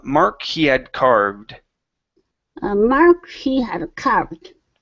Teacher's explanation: instead of saying he had and really pushing hard on that D move right into that c he had carved so don't finish that D sound so um